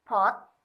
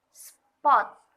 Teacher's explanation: tersebut contohnya adalah huruf e Hai ah ketika kita berkata hot akan terdengar sedikit ada ledakan atau kita mengeluarkan udara dari mulut kita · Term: aspirated